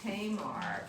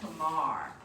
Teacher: I always called it Tamar, but the proper Jewish pronunciation is on the last syllable